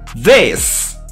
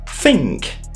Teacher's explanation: dans le premier cas, la gorge vibre. Vous produisez un son vocalisé. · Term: TH vocalisé